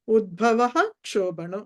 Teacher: విసర్గ తర్వాత క్ష కి కంపల్సరీ రూల్ పూర్తిగా విసర్గ పలకాలి